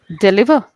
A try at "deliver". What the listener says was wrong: stress. So the stress shouldn't be on the li. It should be on d. Deliver.